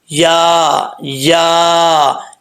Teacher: मखर आपको बता चुका हूं या जुबान का दरमियान जो है ऊपर वाला जो हिस्सा है जुबान का इसके जो दरमियान है ऊपर वाले जो इसका मध्य मुकाबल है तालू उसकी तरफ लगेगा